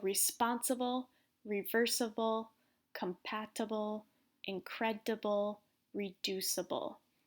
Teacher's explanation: In these words, the stress is on the second syllable.